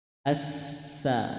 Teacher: huruf Sin harus jelas bis jangan bis bis itu ta Sin posisi lidah ujung lidah ke gigi seri bagian bawah